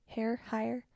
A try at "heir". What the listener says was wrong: Air? Oh, okay, yeah, the H is silent, so it's heir. Like an heir to the throne?